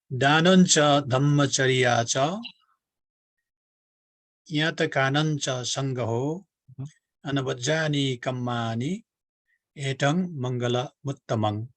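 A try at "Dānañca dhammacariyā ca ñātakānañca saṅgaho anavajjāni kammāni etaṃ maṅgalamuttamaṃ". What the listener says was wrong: Yeah, great.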